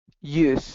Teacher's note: I'm hearing use, with a y sound instead of a j.